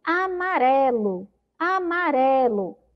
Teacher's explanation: Observem que a sílaba que demorou mais tempo na minha boca foi a sílaba ré. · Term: sílaba mais forte